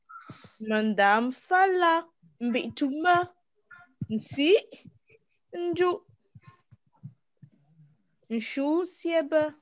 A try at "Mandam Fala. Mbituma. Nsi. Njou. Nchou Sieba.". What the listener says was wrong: C'est très bien lu avec les bons tons. Mais il faut apprendre maintenant à lire comme des natifs. il faut lier.